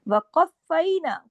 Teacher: क़ाफ मोटा और फा के साथ सख्ती से जोड़ना है